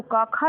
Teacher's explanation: क वर्ग जो आएगा तो का खा जो है आपका यह कंठ से बोला जाएगा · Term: कंठ ध्वनियां